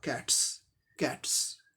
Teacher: जैसे कि CAT ट हुआ, इसके साथ एपोस्ट्रोफी लगा तो इसका उच्चारण अब देखिए फोनेमिक ट्रांसक्रिप्शन में, C का क हो गया, A का ए हो गया, T का ट, कैट, ट साउंड है, ये वॉइसलेस है, इसीलिए इस एपोस्ट्रोफी का उच्चारण स हुआ